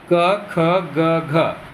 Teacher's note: तो ये सभी कंठ से बोले जाते हैं